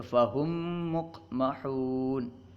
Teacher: میم ساکن کو دوسرے میم میں ملا کر پڑھنا. جیسے فہم مقمحون، دیکھیے فہم میں میم ساکن ہے، اس کے بعد مقمحون میں بھی میم ہے، تو فہم میں جو میم ساکن ہے اس کو دوسرے میم میں ادغام کر دیا گیا، پہلے میم کا دوسرے میم میں ادغام کر دیا گیا، تو فہم مقمحون. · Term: ادغام شفوی